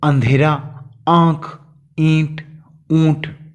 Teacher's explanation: इनका उच्चारण फिर मुख और नाक की सहायता से होता है, जैसे आ, ई, अर्थात जैसे अंधेरा, आंख, ईंट, ऊंट। इन सभी शब्दों में स्वर अनुनासिक है। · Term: अनुनासिक स्वर